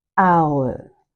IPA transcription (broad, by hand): aʊə